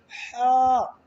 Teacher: ہمارا جو حلق ہے، حلق کے درمیان سے ہا ادا ہوگا، تھوڑا ٹھنڈے سانس کے ساتھ ہا ادا ہوگا